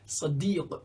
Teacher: A very deep S sound you can make if you open your mouth really wide and lower your jaw.